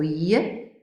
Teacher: produce it with voice yeah and we can also feel that the center of the tongue is not touching the hard palate it's not even very close to the hard palate rather the voice is coming out continuously so yeah is a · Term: palatal approximant